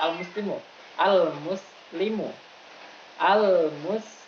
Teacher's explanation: ketika kita membunyikan huruf shafir, kita membunyikannya itu harus sampai terdengar seperti suara siulan burung, suara siul burung. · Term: sifat shafir